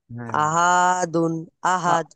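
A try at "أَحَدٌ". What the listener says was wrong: আহা হাটা টানছেন কেন ভাই এখানে টান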